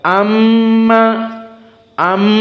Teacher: Amma pertama mimnya musyaddadah wujubul ghunah dua harakat dan keluar dari hidung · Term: gunnah